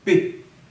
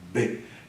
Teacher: P, ele é uma oclusiva surda e outra oclusiva sonora. Então, em termos de sonoridade, você vai marcar que uma é mais e a outra é menos.